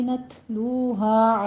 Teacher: لو میں واو مدہ ہے، دونوں ہونٹوں کو گول کرتے ہوئے ادا کیجیے